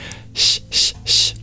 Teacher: the regular sibilant that we're familiar with in English, the palatal one where you arch your tongue up.